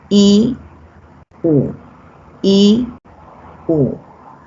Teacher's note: Y para la I y para la U, estas son altas. Ocurren en la parte superior, en la parte del paladar prácticamente